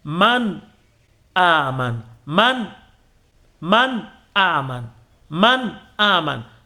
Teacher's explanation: Ghunnatu asliya lazima itakuwepo, ambayo inasababisha ili nuni uisikie nuni man. Ini ghuna ya asili, ile man ghuna ya asili lazima ipatikane. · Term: idhhar